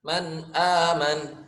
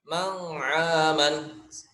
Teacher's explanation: Nah, di sini sama seperti ini ya gitu kan, nun mati bertemu huruf hamzah. Maka disebut izhar ya gitu kan, dengan bacanya dengan jelas seperti itu